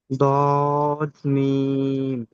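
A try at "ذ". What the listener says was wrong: দদ বলেছেন দদের উপরে কিন্তু একটা নুক্তা থাকে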